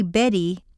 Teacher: over the tip of the tongue and when you say Betty there's a soft puff of air over the tip of the tongue